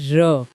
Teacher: क्योंकि र बोलते समय जीभ कांपती है। उसमें कंपन होता है। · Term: प्रकंपित व्यंजन